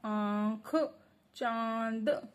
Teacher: चंद्रबिंदु होती है। इसका उच्चारण नाक और गले दोनों से होता है। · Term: अनुनासिक